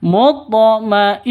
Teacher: ketika wakaf berubah menjadi Ha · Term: Ta marfuta